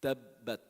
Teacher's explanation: Tabbat, almost a pause in the ba.